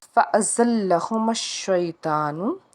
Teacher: فَأَزَلَّهُمَا الشَّيْطَانُ، زا جو ہے حروف صفیریہ کا حرف ہے، سیٹی کی آواز آنی چاہیے، لام کو ہم 2 بار پڑھیں گے